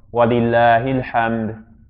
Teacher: that Hamza goes away. As in, there's not going to be that glottal stop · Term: Hamzat al-Wasl